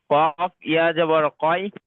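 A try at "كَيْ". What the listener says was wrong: ভাই, এটা কলকলা করছে কেন কেন আমি বলছি শোনেন। কফ ইয়া জাবার ওয়াই, এটা কাফ ইয়া জাবার কাই, এটা কাই করবেন না।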